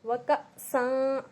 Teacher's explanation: میں تھوڑا سا جھٹکا دے رہی ہوں کیونکہ حمزہ ساکنہ کے پڑھنے میں جھٹکا ہوتا ہے